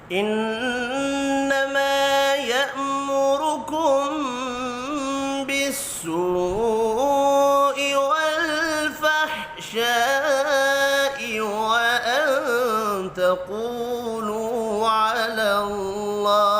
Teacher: نون مشدد پر غنہ کرنا ہے، الف مدہ کو ایک الف کے برابر کھینچ کر پڑھنا ہے